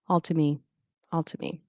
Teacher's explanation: The T doesn't vanish, but it's so softened as a flap or even just a little tongue tap that your ear may skip over it. Sometimes the vowel in to disappears, making the t or the r or the I can't even do a fast D without or flap T without it being in a word, blend into the me.